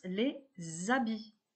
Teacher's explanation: Je prononce les habits. Il s'agit ici d'une liaison.